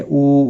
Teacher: ऊ वाव मद्दा है, वक़फ़ की सूरत में भी एक अलिफ के बराबर खींच कर पढ़ेंगे और मिलाने की सूरत में भी।